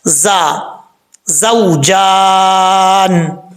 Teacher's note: زا کیونکہ حروف صفیریہ میں سے ہے، اس کو پڑھتے ہوئے زا میں سیٹی آئے گی